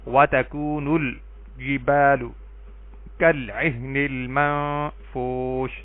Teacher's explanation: میم بھی حروف قمری میں سے ہے اور جیم بھی حروف قمری میں سے ہے، دونوں کے لام پڑھے جا رہے ہیں